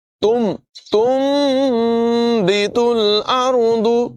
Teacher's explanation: نون کو میم سے بدل دیں گے۔ تنبت الارض نہیں پڑھیں گے بلکہ میم کی آواز ہوگی، تا کو میم سے ملائیں گے، تنبت الارض، اور غنہ بھی یہاں پر کریں گے، تنبت الارض۔ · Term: اقلاب